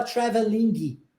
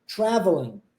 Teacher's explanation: quando nós tivermos esse ing no final de uma palavra a gente não vai pronunciar o g tá por isso que a gente não fala traveling ok a